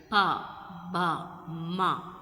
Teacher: Both lips together, pa, ba, ma, they are bilabial.